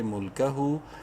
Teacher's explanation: ہا الٹا پیش ہو الٹا پیش کی وجہ سے ہا کو ایک الف کے برابر لمبا کریں گے